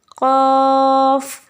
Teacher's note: क़ाफ जो है वो ज़बान की जड़ और तालु के नर्म हिस्से से अदा होते हैं।